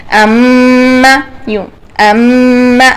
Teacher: ام، یوں، ام، آپ کے نوز میں، آپ کی نوز کی جو ہڈی ہے اس میں اور آپ کی ہونٹوں میں وائبریشن ہونی چاہیے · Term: غنہ